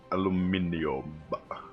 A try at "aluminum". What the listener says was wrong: Aluminum. Like the Americans say. Aluminum. Why would you pronounce every letter in it? Just like call it aluminum. It's silent aluminium. It's silent I there somewhere.